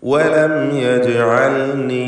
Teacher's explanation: വലം എന്നതിലെ സാക്കിനത്തായ മീമിന് ഇൽഹാർ ഷഫവി നൽകി മണിക്കാതെ വെളിവാക്കുകയാണ് വേണ്ടത്. വലം അല്പം പോലും മണിക്കരുത്.